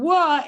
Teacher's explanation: my lips are coming together and then opening and there's also a special position of my tongue as well it's a labial velar sound